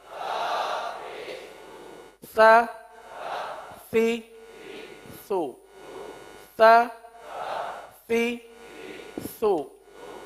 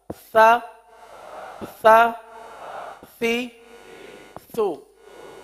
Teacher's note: زبان کا سرا اوپر کے دانتوں کے اندرونی کنارے پر لگ کر نیچے آ رہا ہے